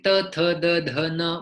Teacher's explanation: कुछ शब्द दांतव्य होते हैं, जैसे त, थ, द, ध, न बोलते हुए हमारी जिह्वा दांत को स्पर्श होती है।